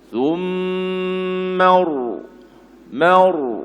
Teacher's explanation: Kena baca tebal. Bila tebal ra tu, pangkal lidah kena naik.